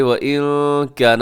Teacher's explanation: نون ساکن کے بعد کاف، تو یہاں پہ ہوگا اخفا